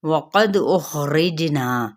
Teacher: دال پہ قلقلہ جیم پہ قلقلہ مد اصلی بالالف.